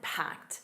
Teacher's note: notice that packed, a soft T at the end